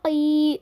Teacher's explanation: قاف کو زبان کی جڑ کو چھوٹی زبان کے پیچھے کے حصے سے لگانے پر قاف ادا ہوگا · تھوڑا کھینچنا ضرور ہے. ایک الف کے برابر کھینچیں گے. مطلب انگلی کھولنے یا بند کرنے جتنا وقت لگتا ہے اس کو کھینچنے میں.